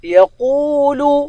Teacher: قوف کو واو کے ساتھ ملا کر قوف کو پر پڑھیں گے، واو کو ایک الف کے مقدار کھینچ کر پڑھیں گے